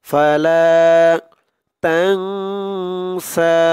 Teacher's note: তাং ইকফা গুন্না করতে হবে